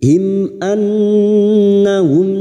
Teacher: nun yang bertasdid gunna musyaddada kita dengungkan selama 3 harokat. Annahum mim sukun bertemu kaf idhar safawi mim sukun dibaca jelas tanpa mendengung.